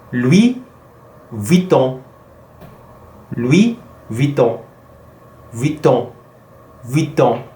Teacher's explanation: the last part is a nasal vowel and it's on